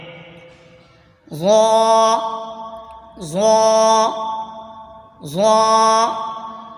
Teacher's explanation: زبان کا سرا اور اوپر کے دانتوں کے اندرونی کنارے سے ادا ہوتا ہے